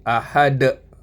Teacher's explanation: semua adalah huruf tebal sebab itu bila dia mati di situ jadi qalqalah kubra dia punya pantulan dia berdetak